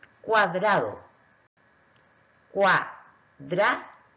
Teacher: Aquí veo que al comienzo de la palabra, al separar silábicamente, me queda la U, que es una vocal cerrada, y la A, que es una vocal abierta. Se juntan dos vocales, por lo tanto es un diptongo, se forma un diptongo.